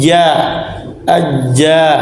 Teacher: dari tengah lidah keluar huruf Jim syin dan ya